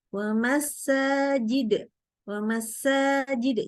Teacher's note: Jadi masuk bunyi sin sukun ke huruf sebelumnya. Bukannya alih-alih wa masa.